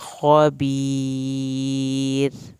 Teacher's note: रा पतला पड़ा जाएगा क्योंकि पीछे ज़ेर आ गई है।